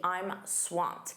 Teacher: Notice that pronunciation, that ed d is a soft t.